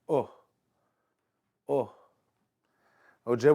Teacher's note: o indicates a short vowel very similar to the vowel of the English words book and hook take a look at book take away the B now we